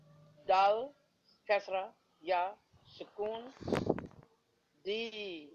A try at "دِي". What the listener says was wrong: Correct.